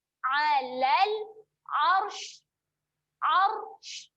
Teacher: dia akan bunyi lepaskan angin secara menyembur kerana adanya huruf shin. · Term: sifat menyembur